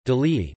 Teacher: is pronounced as [ji], with the palatalization of the preceding consonant